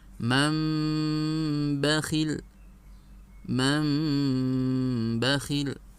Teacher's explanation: Bacaan nunnya dirubah menjadi mim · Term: iklab